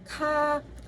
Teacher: konsonan letupan, dorsovelar, tak bersuara, beraspirasi